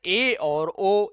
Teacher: जिनके उच्चारण में मुख गुहा थोड़ी सी खुल जाती है उन्हें हम लोग अर्ध संवृत कहते हैं।